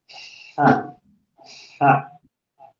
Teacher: May hangin na lumalabas na kasama nagagaling sa ibabaw ng dila mo